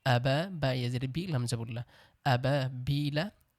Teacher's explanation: এখানে আবা এক আলিফ টান হবে বিলা যদি করি তাহলে এখানেও তিন আলিফ টান হবে